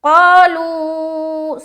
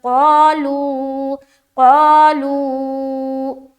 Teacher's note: آمنوا آمنوا آمنوا آگے قالوا قالوا، سب سے پہلے دیکھیں قاف الف زبر قا، منہ بھر کر قا نہیں بولنا، قا نہیں بولنا، باریک نہیں بلکہ منہ بھر کر قالوا قالوا، قا میں الف مدہ اور لو میں مد کر رہے